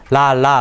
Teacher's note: 리을 발음해 보면 혀 양쪽 끝으로 공기가 이렇게 새어나오는 소리가 나요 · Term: 유음